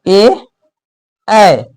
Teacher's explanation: तो कंठ और तालु दोनों के योग से जो वर्ण उच्चारण होता है उसको बोलेंगे कंठ तालव्य। तो ए इसमें कंठ का भी इस्तेमाल हो रहा है, अच्छा खासा कंठ का इस्तेमाल हो रहा है, और इसमें तालु का भी इस्तेमाल थोड़ा सा हो रहा है